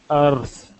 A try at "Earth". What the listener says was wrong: you don't want to roll your R okay you want to force your tongue down